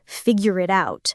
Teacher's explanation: in natural connected speech, it sounds more like figure it out, all linked together, almost like one long word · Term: linking